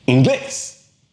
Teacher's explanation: the stress is actually on the last syllable, which breaks the pattern. So therefore, there's an accent on that E.